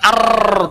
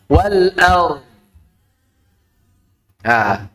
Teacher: Getaran ro itu harus disembunyikan.